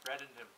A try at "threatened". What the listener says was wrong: You said threaded. Sounds like you said threaded, like thread.